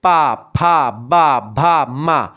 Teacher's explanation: पा बोले तो दोनों ओंठ हमारे नीचे वाला और ऊपर वाला ये आपस में टकराते हैं। आप बोलो बिना ओंठ के टकराए हुए पा बोलो, पा नहीं बोल पाओगे जब तक ओठ दोनों नहीं मिलेंगे। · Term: ओष्ठ